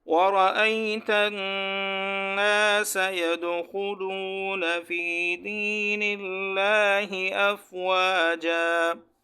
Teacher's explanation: نون مشدد ہے، یہاں ایک الف کے برابر غنّہ کرنا ہے · اور یہ بھی پڑھا تھا کہ لفظ اللہ سے پہلے زیر ہو، تو یہ لفظ اللہ ہے، اس سے پہلے نون پر زیر ہے تو ہم نے اس کو باریک پڑھنا ہے